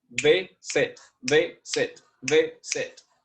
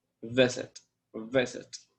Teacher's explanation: Okay, guys, incorrect. Because I have the accent on the first syllable.